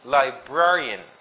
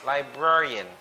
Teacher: So the stress is in the second syllable, the br.